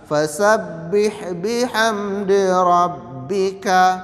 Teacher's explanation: makhorijul huruf nya di dua bibir merapatkan kedua bibir